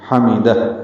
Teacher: میم جلدی پڑھیں گے، دال کو ہا سے ملا دیں گے، ہا ساکن ہے، اس پہ ہمس ہوتا ہے، یعنی سانس جاری رہتی ہے اس کے پڑھتے ہوئے